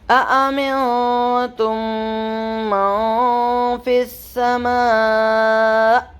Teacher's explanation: نون ساکن کے بعد تا باریک لیٹر ہے تو یہاں پہ باریک اخفا ہوگا